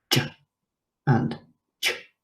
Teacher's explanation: with the ch sound, it's the hard palate